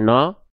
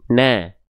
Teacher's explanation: maka praktekkanlah vokal A-nya dibaca tipis.